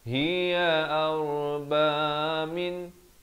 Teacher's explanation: nun mati jelas, jangan panjang, izhar halqi.